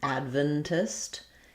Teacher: because I'm stressing on the first syllable, my ven syllable is going to be more like vin, or just even vin, Adventist. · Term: first syllable stress